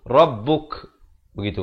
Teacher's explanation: Ada bunyi hamas, ada bunyi angin di sikit di hujung itu.